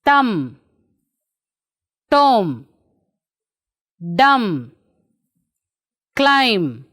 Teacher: B is not pronounced after M at the end of the word.